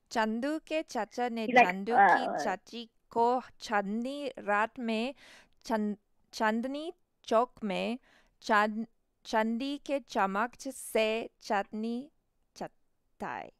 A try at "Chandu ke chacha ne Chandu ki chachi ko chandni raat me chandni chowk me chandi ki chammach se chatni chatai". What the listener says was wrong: Yeah, you got it. Yeah.